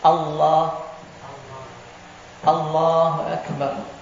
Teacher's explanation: Cuma lam tebal dan mudgham, diidghamkan.